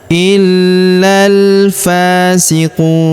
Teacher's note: Huruf fa kita panjangkan dua harakat karena terdapat alif kecil di atasnya.